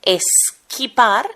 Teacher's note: Se le ha incorporado una epéntesis, la E, porque sabéis que los españoles no podemos pronunciar la S a principio de palabras y a continuación hay otra consonante.